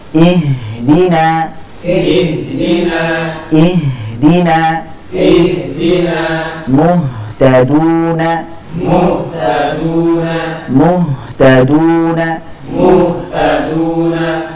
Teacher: Jangan sampai ditebalkan karena ha termasuk huruf yang tipis yang kedua ha kita alirkan karena dia memiliki sifat rakah yaitu